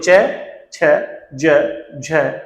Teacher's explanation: जो च वर्ग है वो तालव्य है, यानी तालु को टच करते हुए जिह्वा बाहर आती है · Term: संघर्ष स्पर्शी